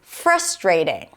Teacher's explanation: in the US it is likely to be pronounced as frustrating. Stress is on the first syllable.